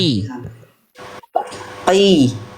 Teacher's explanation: Jadi fokus Bunda itu di pangkal lidah. Ingat naikin pangkal lidah, ingat huruf qaf aja.